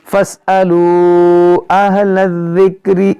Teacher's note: اہل الذکر، لام کو ذال سے ملائیں گے.